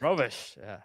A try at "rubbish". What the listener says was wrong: Not rubbish. Not like wearing a robe.